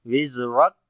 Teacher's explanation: کاف کے اوپر جب رکیں گے تو شدت اور ہمس آئے گی، پہلے شدت ہوتی ہے پھر ہمس